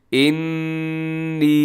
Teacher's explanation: اور اس کو آپ نے لمبا کر کے پڑھنا ہے، انی، نون کے اوپر تشدید ہے، غنے کے ساتھ تھوڑا سا کھینچ کے